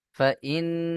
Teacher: فإن مع العسر يسرا فإن فا زبر فا همزة نون زر إن نون زبر না إن فإن নুনের উপরে তাসদীদ ওয়াজিব গুন্না।